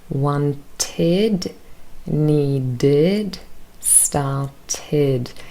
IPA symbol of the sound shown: ɪd